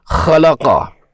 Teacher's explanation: خلقہ میں حرف خا ہے، یہ بھی مستعلیہ حرف ہے، موٹا پڑھنا ہے